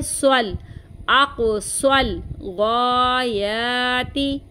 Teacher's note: आको, ठीक है, अब इसको बहने पड़ती हैं सल, इसको सल नहीं पढ़ना, स्वाद को हम लाम के साथ मिलाएंगे